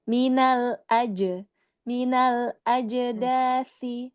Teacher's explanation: ada kol-kolah pada jimnya ya